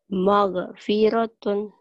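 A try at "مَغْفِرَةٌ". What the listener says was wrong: Itu mah orang Sunda ya. Ke G, maghfiratun. Jangan G, maghfiratun.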